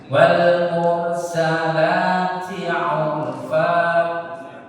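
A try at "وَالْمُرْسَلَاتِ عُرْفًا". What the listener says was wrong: Murnya kurang tebal Ustaz. Mur R-nya tebal.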